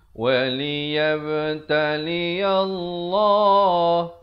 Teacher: Lafzu jalalah ini dibaca tebal dua harakat.